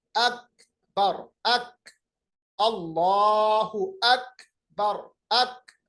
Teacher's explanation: आवाज बिल्कुल ठहर जाती है ब्रेक की तरह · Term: शिद्दा